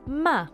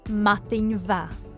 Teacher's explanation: the change from ma to va is called lenition the softening of a consonant at the beginning of a word and it's shown in writing by an h after the consonant